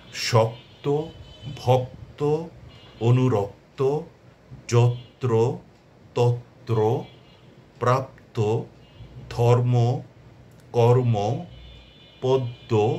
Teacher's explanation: শব্দশেষে সংযুক্ত বর্ণ থাকলে সেক্ষেত্রে অন্তিম বা শেষের অ এর উচ্চারণ ও এর মত হবে। · শব্দ শেষে সংযুক্ত বর্ণ থাকলে সেক্ষেত্রে অন্তিম ওকারের মতো উচ্চারিত হবে। অর্থাৎ শব্দ শেষে যদি যুক্ত বর্ণ থাকে বা সংযুক্ত বর্ণ থাকে, তাহলে পরে যে অন্তিম আছে, শেষ অটা আছে, তার উচ্চারণ হয়ে যাবে ওকারের মতো, অর্থাৎ ওকারান্তে উচ্চারিত হবে।